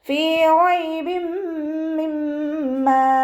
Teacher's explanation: ഫഇൻ്റെ കൂടെ യാമദ് വന്നു. 2 count നീട്ടിക്കൊടുക്കുക. റോ ഫതഹ ആയതുകൊണ്ട് നമ്മൾ ഉയർത്തി കൊടുക്കുക കേട്ടോ.